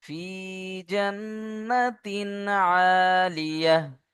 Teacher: নুনের উপরে তাসদীদ অজীব গুন্না